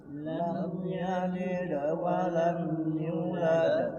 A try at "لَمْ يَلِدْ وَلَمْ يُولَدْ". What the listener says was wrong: Yu-nya dua harokat. Ya, yulad. Lam yalid wa lam yulad.